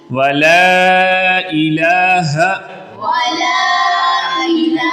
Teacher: اب لا کو اس لیے لمبا کرنا ہے کہ یہاں پہ مد منفصل ہے تو تھوڑا سا لمبا کرنا ہے۔